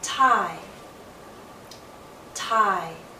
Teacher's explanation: start in a more open position ah and then glide into e